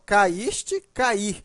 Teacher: veja que a pronúncia é a mesma ó caíste cair né o i é forte nos dois casos o i está formando iato é a segunda vogal do iato está em outra sílaba só